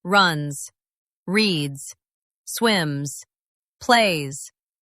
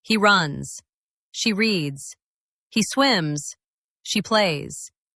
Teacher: feel your throat. It vibrates slightly for that Z sound.